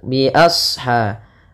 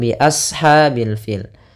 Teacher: ini shadnya dibaca kita tebal